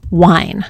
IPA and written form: waɪn (wine)